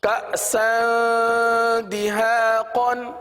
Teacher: اسی طرح کأسا دہاقا، یہاں پر سین پر دو زبر کی تنوین ہے، تنوین کے بعد دال حرف آ رہا ہے، اور دال حروف اخفا میں سے ہے، لہٰذا تنوین پر اخفا کا قاعدہ ہوگا، یعنی غنہ کر کے پڑھیں گے